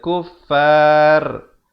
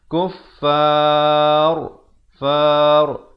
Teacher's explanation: Ra-nya dibacakan dengan tebal kerana sebelumnya datang huruf mat dan sebelum huruf mat itu datang huruf yang berbaris fathah.